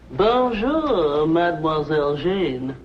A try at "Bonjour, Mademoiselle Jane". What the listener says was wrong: That's very good. Except for the mwah. Must be soft. Mwah.